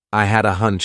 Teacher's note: I combine had a together as one word